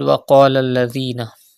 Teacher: Pronounce qaf with thicker voice because it is a mustaliya letter.